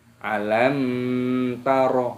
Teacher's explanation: cara membacanya jelas tidak boleh didengungkan contoh alam taroh itu tidak boleh harus dibaca jelas alam atau